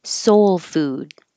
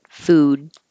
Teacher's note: You don't have to release that D. I should put that little mark there to say hold your tongue in the D position so you don't say food.